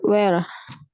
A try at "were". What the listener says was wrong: Were. Bukan where ya, bacanya were. Were. Lebih ditekuk were. Were.